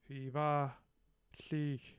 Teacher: I hear a voiced bilabial fricative, va. I hear the low back vowel, which we've heard before.